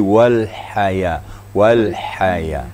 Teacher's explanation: Jadi hamasnya dulu, artinya embusan anginnya dulu baru diikuti dengan suara.